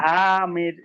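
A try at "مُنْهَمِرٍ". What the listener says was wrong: মুনহামির, হা টানাবে না, মুনহামির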